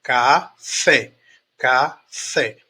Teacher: fé é a a sílaba mais forte da palavra café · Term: oxítona, sílaba tônica